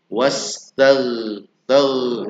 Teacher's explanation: Tag bukan dipantulkan tapi di dialirkan.